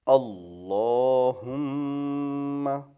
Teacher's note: میم چونکہ مشدد ہے اس لیے یہاں غنہ ہوگا